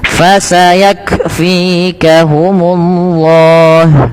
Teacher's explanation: ketika melafalkan kaf sukun, yaitu huruf kafnya yang pertama ditahan dulu nafas, ditahan dulu suaranya, baru alirkan nafas. Fasayak, bukan fasayak langsung, tapi tahan dulu nafas suaranya, baru lepaskan nafasnya.